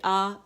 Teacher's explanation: آ تو یہ فرنٹ سے ہماری آواز نکل رہی ہے، الجوف سے نکل رہی ہے